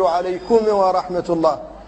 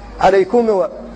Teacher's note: بعض الناس يقلقل الميم فيقول عليكم ورحمة الله، وكثيرا ما تسمعون الأئمة يفعلون ذلك، وكثير من القراء أيضا يفعله فيقلقلون الميم عليكم و.